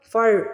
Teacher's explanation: را سے پہلے والا ورڈ جو ہے وہ فا ہے، فا کے اوپر زبر آ رہی ہے تو ہمیں را کو موٹا پڑھنا ہے